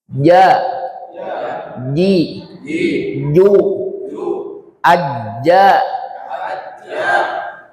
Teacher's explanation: jim ini dia huruf yang hampir melekat dengan langit-langit mulut atas.